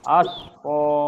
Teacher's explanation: সিনে একটু বাতাস বের হবে। আশ ক, এবং কফ মোটা হবে।